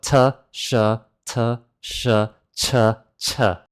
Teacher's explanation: And to explain that difference, I need to explain how you make the sound ch in English. Well, the sound ch comes from the sound of t and the sound of sh put together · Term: English ch